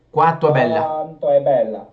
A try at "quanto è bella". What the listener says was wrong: get rid of the n. Qua tu è bella, that's too high, but qua tu è. If I say qua tu è bella, qua tu è bella, do you hear it? Do you hear a big difference?